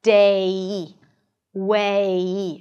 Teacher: Imagine as if there is a 'y' sound at the end, and you want to get to that 'y' sound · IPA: /deɪ/, /weɪ/